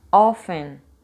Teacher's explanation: não existe a pronúncia do te é como se ele desaparecer